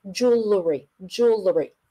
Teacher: the middle syllable is very short